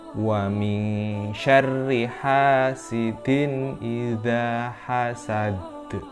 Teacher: terdapat huruf z pelafalannya ada pada ujung lidah